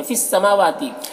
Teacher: میم اور واو دونوں میں کھڑا زبر ہے، دونوں کو ایک الف کے برابر کھینچیں گے۔